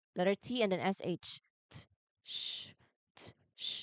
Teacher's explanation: So, to make it, start by putting your tongue in the same position as t, wherein the tip of your tongue touches the ridge behind your upper teeth. However, instead of just a quick pop, you release the air slowly to create that s h friction, or sh. So, it is like a t that turns into an s h instantly. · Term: affricate sound